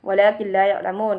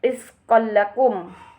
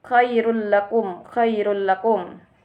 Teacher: Hukum bacaan disebut idgham bila gunnah, yakni apabila nun sukun atau tanwin bertemu dengan lam dan ra. Cara membacanya yaitu dengan mengidghamkan nun atau tanwin pada lam dan ra, tetapi tanpa mendengung